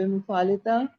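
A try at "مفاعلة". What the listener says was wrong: مفعلتہ کیوں کہا ہے آپ نے؟ مفعلہ کہنا ہے تو پھر ہا کی ساؤنڈ بھی آنی چاہیے. مفعلہ.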